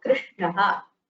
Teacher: Here there is a Shakara, immediately Nakara follows, and it is not Nakara. The Tavarga Nakara, which is the Murdhanya Nakara, is used in conjunction with Sh.